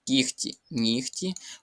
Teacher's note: У цих словах г переходить у звук Х. Отже, тут буде звук х, кіхті, нігті.